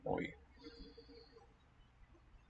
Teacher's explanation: oi is both labial and palatal in its breakdown, its articulation